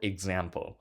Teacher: I'm clearly emphasizing the syllable exam the second syllable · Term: stress